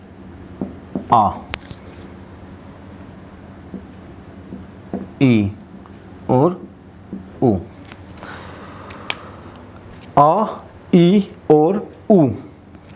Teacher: दीर्घ संधि स्वर को बोलने में भी 2 मात्रा के बराबर समय लगता है